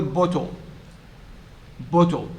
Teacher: e is not sounded the e is not sounded and so the second syllable is made up of a syllabic consonant not a vowel